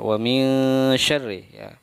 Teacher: Nah, ini hukum bacaannya yaitu ikhfa ya. Atau ikhfa artinya samar ya, dibaca samar-samar antara jelas dan dengung. Jadi samar ya, mil ya, ada eng ya, kedengaran bunyi suara eng ya di situ ya.